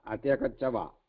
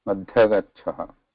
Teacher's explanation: There is no va here. It's visarga. There is no va.